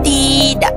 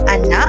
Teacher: mengalami proses pengglotisan pada akhir kata